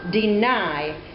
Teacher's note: the unstressed and then the stress syllable following each other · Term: unstressed stressed